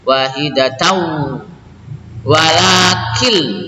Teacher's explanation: Wahidatau walakil, ini idgham bila gunnah, tidak dibaca walakin, nun matinya masuk kepada huruf lam, idgham bila gunnah ya.